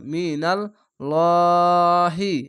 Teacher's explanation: ল মোটা করে পড়ছি কেন উপরে জাবার আছে তার জন্য